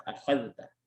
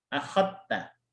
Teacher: Tapi kalau Hafs itu tetap dipisah, akhadta.